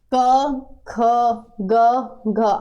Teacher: क को आप मान लीजिए गले से ठीक है तो इसका उच्चारण स्थान हो गया कंठ